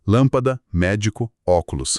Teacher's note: E por fim, as propoxítonas com a tônica na antipenúltima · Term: proparoxítonas